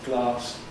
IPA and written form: glɑːs (glass)